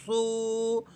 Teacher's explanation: صاد واو پیش سو، صاد حروف مستعلیہ میں سے ہے اور ہمیشہ موٹا پڑھے جانے والا حرف ہے